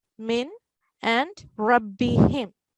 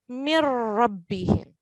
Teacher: But when we join it together, the 2 words, the noon sakin would be totally ignored and not pronounced. So mim with a kasra will join with ra mushaddad. Mir rabbihim. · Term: idgham bighayr al-ghunna